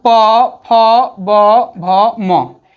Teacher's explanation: इन वर्णों का उच्चारण होठ से होता है, ओष्ठ से होता है, इसलिए उसको ओष्ठ भी कहा जाता है।